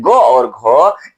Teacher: और यह जो ऐसी दो ध्वनियां है ग और घ इसमें कंपन भी शामिल हो जाता है। यानी कि इन दोनों का कंपेयर करें तुलना करें तो ये पहले जन्म लेगी और इसमें अब कंपन शामिल कर दीजिएगा तब ये जन्म लेगी।